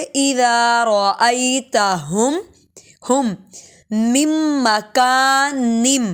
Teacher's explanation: یہاں پر نون کی آواز بالکل نہیں آئے گی · غنہ کرتے ہوئے درمیان والا میم ساکن ہو جائے گا ، پھر اسی میم کو اگلے والے میم سے جوڑیں گے،